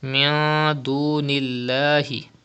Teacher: You can see dal ikhfa letter after noon sakin. The rule ikhfa will be done and gunna will be done in noon sakin. And there is zir before the lam of Allah's name, so the lam of Allah's name will be pronounced in a thin voice.